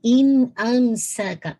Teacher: پھر دیکھیے ان امسکا، اظہار ہے، نون ساکن کی آواز واضح ہوگی، ناقص غنہ اگین ہے. ان امسکا، اگین ام پہ ناقص غنہ، پورا ساؤنڈ کمپلیٹ ہو.